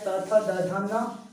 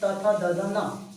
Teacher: जब हम उच्चारण करते हैं तब त थ द ध न, मतलब जीभ हमारी दांत से टकराती है।